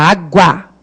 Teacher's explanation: Se esse U é pronunciado e é átono, porque você fala água, é o A que é forte, não o U